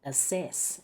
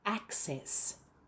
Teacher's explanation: There should be a C sound and double check you're putting the stress on the right syllable. It's the first syllable. Many many non-native speakers pronounce that word as assess.